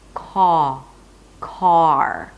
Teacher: because of the R, the lips round a bit